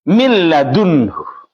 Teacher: Milladunhu ini tidak ada nunnya. Ketika bertemu lam, ini hilang nunnya, langsung masuk ke lam. Dibaca dengan seakan-akan seperti ini tulisannya. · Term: idgham total